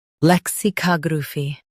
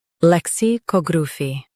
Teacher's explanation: lec si cog ra phy lexicography lec si cog ra phy lexicography US stresses ca UK stresses cog